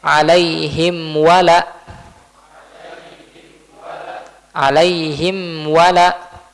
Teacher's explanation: jadi mimnya dibaca dengan jelas tidak diikhfakan tidak disembunyikan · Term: izhar